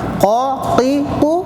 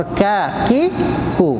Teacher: بڑا قاف سے تھوڑا باہر ہٹ کے اس کے برابر تالو ملا کر کاف، زر زبان تالو ملا کر قاف. اور اسی قاف کے مخرج سے تھوڑا ہٹ کے باہر کاف